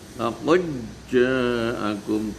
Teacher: dalnya hilang masuk di dalam jim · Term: idgham mutaqariban